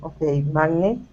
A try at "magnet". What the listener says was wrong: Stress at the very beginning. Instead of magnet, it's magnet.